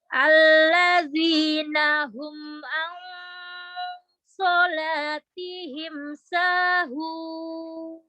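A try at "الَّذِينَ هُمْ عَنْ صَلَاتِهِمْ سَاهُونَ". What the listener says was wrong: Huruf za-nya ditipiskan lagi.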